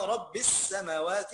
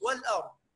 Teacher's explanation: اللام أضغمت في السين، وهنا والأرض لم ألف أظهرت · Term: ادغام لام ال